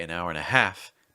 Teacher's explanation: when you say an hour and a half the stress is on half